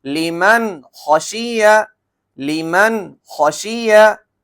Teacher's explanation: नून साकिन आ गया। और हरूफ हलकी के छह हरूफों में से ख आ गया। तो बगैर गुना के हमने पढ़ा।